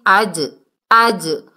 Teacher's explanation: یہاں پر دیکھیے جیم کی ڈبل ساؤنڈ آئے گی